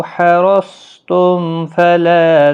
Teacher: میم کے بعد فا ظہر شفوی ہوگا